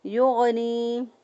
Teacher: غین کو ادنیٰ حلق سے ادا کیا